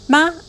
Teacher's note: Ma in a high pitch, means mother.